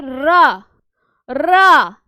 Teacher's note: जो हमारा रा है, रा को क्या कहा जाता है, लुंठित वर्ण कहा जाता है, और क्या कहा जाता है, कंपित वर्ण कहा जाता है, और क्या कहा जाता है, प्रकंपित वर्ण कहा जाता है। क्योंकि जब आप बोलेंगे रा रा तो जीभ में क्या हुआ, कुछ वाइब्रेशन हुआ ना